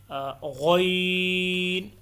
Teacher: غین بھی عین سے تھوڑا سا اوپر کر کے حلق سے ادا ہوتا ہے، اور غین کو پر پڑھنا ہے، یعنی موٹا پڑھنا ہے، اور عین اور غین کو 3 سے لے کر 5 الف تک لمبا کرنا ہے، ٹھیک ہے۔